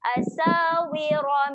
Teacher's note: Ra. Ketika baris atas sifatnya tebal. Muncungkan sedikit mulut.